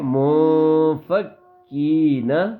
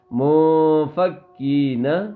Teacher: کاف کو باریک پڑھیں گے بیٹا. زور نہیں لگائیں گے